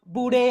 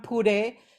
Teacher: the ba, which is the bilabial voiced, has gotten mapped to a p